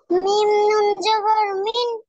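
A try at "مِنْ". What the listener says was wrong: জবর না, এটা জের। মিম নুন জের মিন। বলেন।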